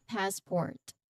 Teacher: there's a clear t sound at the end. · the emphasis is on first syllable of of course passport